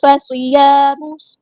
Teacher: ہوگا، فَصِيَامُ، باریک اور صاد ہمارا ہیڈیٹر پورا ادا کریں گے، الف مد آیا 2 کاؤنٹ لمبا کریں گے